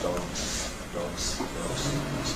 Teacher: you get early switch off of the voicing in the plosive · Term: linis devoicing